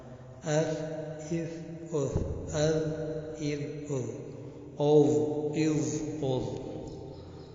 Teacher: زبان کی نوک اور ثناء علیہ کا کنارہ، اس سے سا، زاد اور ضا نکلتے ہیں.